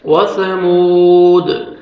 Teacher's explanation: دال حروف قلقلہ میں سے ہے، جب ساکن آئے گا ڈبل ساؤنڈ آئے گا